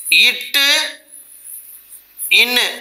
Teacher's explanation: நாவின் நுனிப்பகுதி அன்னத்தின் நுனிப்பகுதியை பொருந்துவதால் உண்டாகுவது